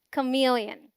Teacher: The first syllable, जो कि unstressed है, sounds like क, as in come. MEL is the stressed syllable and it sounds exactly like meal.